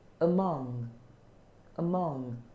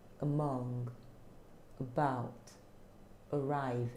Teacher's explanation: the first sound you hear is the schwa sound the vowel sound so and it's very subtle very subtle very soft